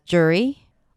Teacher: Some people might reduce the sound and just pronounce it as /ˈdʒɝːi/ - with an /ɝ/ as in stir